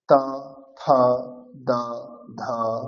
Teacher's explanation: এদের উচ্চারণ হবে দন্ত থেকে। যেউ ওপরের দাঁতকে স্পর্শ করবে উচ্চারণ করার সময়।